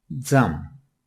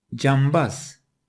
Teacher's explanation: C sesi Türkçede olmayan bir sese, Z sesine dönüşür